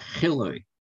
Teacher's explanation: transliterated with a high uh high sound as in chi squared it's not a real h it's an h with a little bit of constriction in the throat so it's more like hillary that's how they pronounce it but